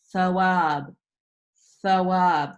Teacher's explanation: in the letter tha, they are barely touching, which allows air to pass through